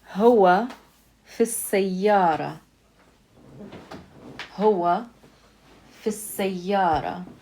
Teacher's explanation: the word سيارة, we're connecting it in speech with the word fi. That means that the word سيارة has an alif lam on it.